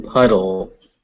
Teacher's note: it's a D, it's a dull sound, not a tull sound